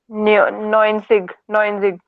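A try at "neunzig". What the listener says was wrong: ज, ज थोड़ा ही ना है। सिग नहीं जी, नॉइन शिश। शिश है ना, आप इसको पढ़ो। Z के साथ में आई है तो सी, IG किसका साउंड करता है? शा का। शिश, नॉइन, नॉइन, नॉइन, नॉइन शिश।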